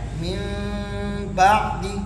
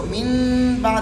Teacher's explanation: یہ نون تبدیل ہو گیا میم سے, نون نہیں ہوگا, یہ ہے میم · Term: اقلاب